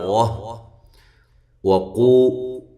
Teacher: واو کو ادا کرنا ہے ہونٹوں کو گول کرتے ہوئے